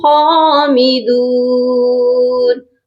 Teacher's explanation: دال کے ساتھ واو مدہ ہے، اس کو بھی ہم نے ایک الف کے برابر لمبا کر کے پڑھنا ہے۔ ٹھیک ہو گیا؟